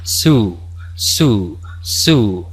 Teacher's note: con esa doble o es una u larga